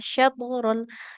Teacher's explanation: Nah, huruf shinnya nggak boleh jadi sa, nggak boleh satur. Sya, tengah lidah menempel ke langit-langit atas.